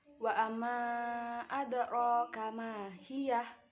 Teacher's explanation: Pada kata roka ini huruf ro dibaca tafkhim atau tebal karena huruf ro berharokat fathah.